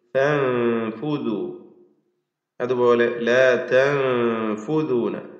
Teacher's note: ഈ രണ്ട് പദങ്ങളിലും സാക്കിന നൂൻ ഇഖ്ഫാ ഹഖീഖി അവ്യക്തമാക്കി മണിച്ചുകൊണ്ട് ഉച്ചരിക്കുക